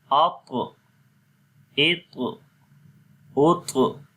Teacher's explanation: طا کو موٹا بھی پڑھیں گے اور اس کے اوپر بلو کلر ہے یعنی قلقلہ بھی کریں گے